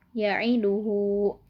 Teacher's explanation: Karena huruf H bertemu dengan huruf selain hamzah. Cara membacanya panjang 2 harokat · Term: madsilah qasiroh